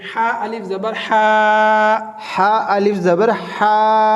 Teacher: یہ حروف حلقی میں سے ہے اور حلق میں سے ادا ہوگا